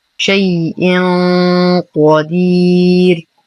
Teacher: تنوين وبعده حرف القاف الحكم إخفاء حقيقي مع غنة كاملة مفخمة لأن حرف القاف من حروف التفخيم والاستعلاء.